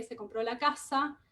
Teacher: en donde el acento prosódico cae en la primera sílaba de casa